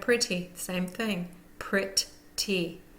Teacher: the first syllable gets the primary stress